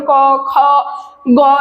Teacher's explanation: সেগুলো কিন্তু দীর্ঘভাবে উচ্চারণ করতে পারবো না যেমন ক খ গ এগুলো কিন্তু থেমে যাচ্ছে আমরা কিন্তু অনেকক্ষণ উচ্চারণ করতে পারছি না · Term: রুদ্ধদল